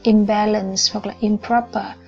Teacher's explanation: Nhưng mà khi gắn trước polite là một âm môi đó, thì chúng ta sẽ có cái biến thể hình vị là im. Tại vì m, p đều là hai âm môi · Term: assimilation of place